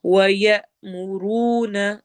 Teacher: یا حمزہ پہ جھٹکا دینا ہے